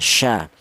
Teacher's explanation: Kalau yang mempunyai sifat tafasyi atau ada suara tersebar ini keluarnya huruf berasal dari tengah lidah ya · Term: huruf syin